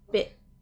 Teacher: So what I'm feeling there is when I'm doing the I, the tongue is coming up just behind the teeth to stop the T